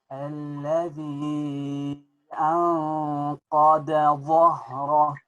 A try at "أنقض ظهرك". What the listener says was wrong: Make the ضاد مفخمة. أنقض